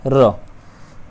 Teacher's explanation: लुंठित व्यंजन, जिसके उच्चारण में जीभ तालु से लुढ़ककर स्पर्श करती है।